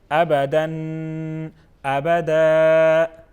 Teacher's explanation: دو زبر ہیں. تو دو زبر کو ہم کس طرح پڑھیں گے؟ ایک الف کے برابر اس کو کھینچ کے پڑھتے ہیں، یا الف مد میں کنورٹ کرتے ہیں اور اس طرح پڑھتے ہیں. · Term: دو زبر والی تنوین